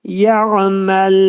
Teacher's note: Məl dedikdə ləm hərfini incə çıxartmalıyıq.